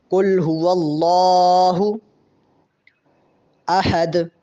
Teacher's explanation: اللہ کے نام کے اوپر چونکہ کھڑا زبر ہے اس کو تھوڑا لمبا کریں گے